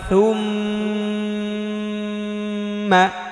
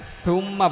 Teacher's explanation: এখানে সুম্মা বলা যাবে না, থা জিব্বার আগা দাঁতের আগা, অর্থাৎ জিব্বা একটু বের করে বলতে হবে, থু নরম করে।